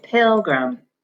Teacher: we say pilgrim and in this word that first syllable has the accent